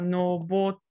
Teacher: noboru becomes nobote with a little glottal stop in the middle